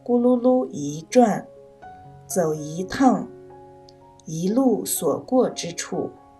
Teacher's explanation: 因为一字后面跟的是四声，所以一读二声